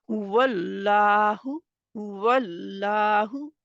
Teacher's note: थी जिसकी वजह से अल्लाह का नाम कलाम मोटा हो गया वल्लाह में अल्लाह के नाम से पहले जबर थी वाव के ऊपर इस वजह से अल्लाह का नाम मोटा हो गया लाम मोटा हो गया